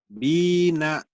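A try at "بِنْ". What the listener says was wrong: Bina ini matobi'i. Ketemu satu huruf hidup dihentikan jadi bin, materi disukun.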